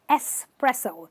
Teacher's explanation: the ex is said as an s